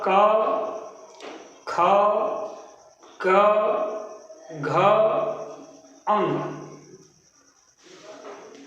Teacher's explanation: इन वर्णों को कंठ वर्ण कहा जाता है क्योंकि इनका उच्चारण स्थान कंठ है।